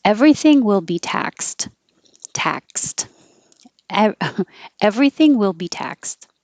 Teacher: it looks like ed but it sounds like a t